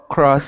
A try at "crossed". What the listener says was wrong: Yeah, exactly.